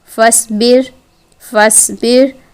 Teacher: اگر ہم صاد کو باریک پڑھیں گے تو یہ تو سین بن جائے گا